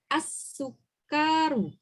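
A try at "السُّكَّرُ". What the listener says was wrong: Enggak ada yang panjang. Asal ini kan enggak ada tasdidnya. Yang penting enggak ada yang panjang Bu. As-sukaru.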